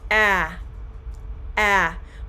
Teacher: The front of your tongue is pushed forward and held lower in the mouth when forming the short A, the ah sound, than with any other vowel sound. So this is why it's important for you to make sure you're really opening your mouth when you say ah. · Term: short A vowel sound